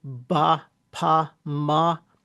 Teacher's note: So we can have what are called bilabial consonants, and that means bilabial means two lips. So ba, pa, ma, those are all bilabial.